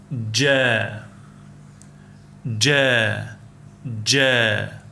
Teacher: The articulation point of gimm is the middle of the tongue against the hard pallet. The middle part of your roof of your mouth. · When you pronounce gim, your tongue should rise and touch the hard pallet. And the qualities of the gym is considered a voiced sound because your vocal cords vibrate during its pronunciation